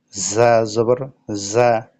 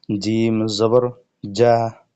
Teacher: জা উচ্চারণ করার সময় একটু ফিস ফিস আওয়াজ বের হবে, আর জিম উচ্চারণ করার সময় শক্ত করে মোটা করে ধরে রেখে উচ্চারণ করতে হবে